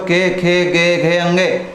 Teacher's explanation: ये दोस्तों कहाँ से बोले जाते हैं, कंठ से बोले जाते हैं